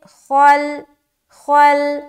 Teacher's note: دھیان رہے کہ لام موٹا نہ ہونے پائے، اگر لام موٹا ہو رہا ہے تو اس کو درست کر لے۔ خا کو موٹا نکالنا ہے، لام کو ہمیں باریک رکھنی ہے